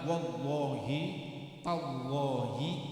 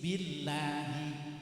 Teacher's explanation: Itu yang dua dibaca tebal, wallahi, tallahi. Yang satu dibaca tipis, billahi.